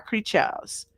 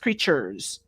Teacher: in England, people mostly don't say the R